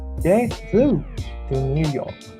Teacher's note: The nucleus is on the verb flew. The speaker wants to emphasize how they traveled.